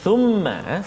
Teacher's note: Thumma di atas huruf mim ada sabdu. Thumma wajib al-gunnah, kena dengung kat situ dua harakat, tak boleh cepat ataupun tak boleh laju bacaan kita.